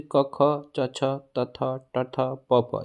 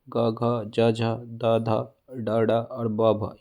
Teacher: इसमें मैं थोड़ा सा रिमाइंड करा दूं कि देवनागरी के हर नियमित वर्ग वर्ग में पहले दो वर्ण अघोष और उनके बाद के तीसरा, चौथा और पांचवा वर्ण सघोष होता है